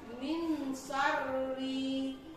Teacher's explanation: Min syarri ini termasuk ke dalam ikhfa hakiki karena ada huruf nun mati. Jadi bacaan nun ini dibaca samar atau kurang jelas